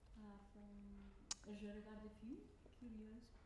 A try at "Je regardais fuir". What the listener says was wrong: Je regardais fuir. Now I don't hear the word fuir. Fuir. But we must hear the fuir. Because fuir is past tense.